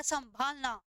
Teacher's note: वायु नाक से कम निकल रही है, लेकिन मुख से क्या निकल रही है आपकी? अधिक निकल रही है। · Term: अनुनासिकता